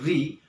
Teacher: हमारी जीभ स्वतः ही कांप जाएगी मूर्धन्य वाले भाग में, मूर्धन्य वाले भाग को स्पष्ट करेगी और वही इन सभी का उच्चारण स्थान है।